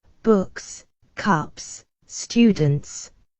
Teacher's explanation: pronounced as normal s in plural if word ends with p t k like books cups students